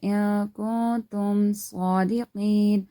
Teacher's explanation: So we're gonna be hiding the sound of the noon into the nose. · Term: ikhfa